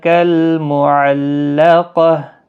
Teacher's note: تشدید والا حرف سختی کے ساتھ پڑھیں، قاف مستعلیہ ہے، پر پڑھا جائے گا، اور گولتا وقف کی صورت میں ہا ساکن پڑھا جائے گا۔